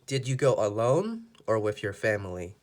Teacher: family is the last word and the last choice the other choice is alone so alone has to go up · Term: or question